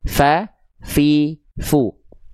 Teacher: Jadi ujung gigi sari atas kita disentuhkan dengan bibir bawah bagian dalam yang basahnya. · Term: huruf fa